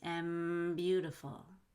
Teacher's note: you want to link the M to beautiful.